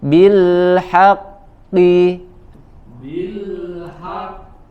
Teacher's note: ada huruf qaf bertasydid dengan harokat kasrah ya, maka ketebalannya tidak sama dengan ketebalan huruf qaf ketika berharokat fathah atau dhammah ya, lebih tipis.